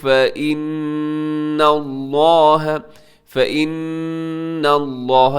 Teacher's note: نون کے اوپر شد ہے اور نون مشدد ہے تو مطلب کہ غنہ ہوگا یہاں پہ، اور لفظ اللہ موٹا پڑھیے گا کیونکہ اس سے پہلے نون کے اوپر زبر ہے۔